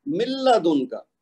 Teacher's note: نون لکھنے میں ہے لیکن ادا کرنے میں نہیں ہے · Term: بغیر غنہ کے ادغام